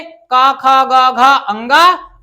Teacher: कंठ से का, खा, गा, घा, अंगा, और पंचम अक्षर नासिका से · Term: कंठ और नासिका